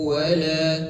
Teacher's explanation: tanwin bertemu dengan huruf wau hukumnya idgam bigunah dimasukkan dengan didengungkan dulu ditahan dulu